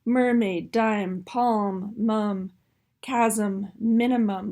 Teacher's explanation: that velopharyngeal port here is open so that airflow is coming up and out the nasal cavity. Okay, that's the key point there, differentiating that M from the B.